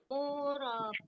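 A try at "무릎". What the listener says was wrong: Murep. murep pakai P ya. Jadi tidak murep, nggak pakai H.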